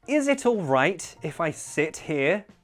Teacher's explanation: you'll notice i use glottal t's